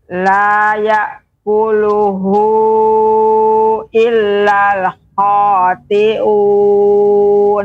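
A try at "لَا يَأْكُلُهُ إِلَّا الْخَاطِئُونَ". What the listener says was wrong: Ya, kha lebih diperjelas lagi, diperjelas pengucapan kha, khi, khu. Illal khati'un.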